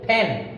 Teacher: যদি বলি দুই ঠোঁট দিয়ে বলি ফ্যান, তাহলে আমাদের ভুল হবে